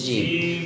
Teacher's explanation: بیچ زبان اور زبان کا بیچ کا حصہ اور تالو کا بیچ کا حصہ